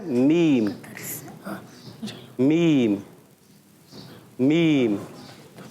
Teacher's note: دونوں ہونٹوں کے خشک حصے سے